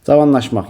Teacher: Yalnız qalın açıq saitlər işləmişdir. Bəli, hamısı qalın saitlərdir və açıq saitlərdir.